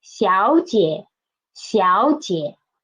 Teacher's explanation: A tone Sunday of third tone, which is the first third tone will transform into second tone